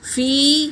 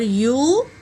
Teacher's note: الف مدہ ہے تو ایک الف کے مقدار کھینچیں گے۔ کانا، فی یا مدہ ہے اور یو واو مدہ ہے، دونوں کو ایک الف کے مقدار کھینچیں گے